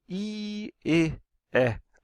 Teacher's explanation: these vowels simple because it's they are not rounded the um the lips are unrounded they form like a slit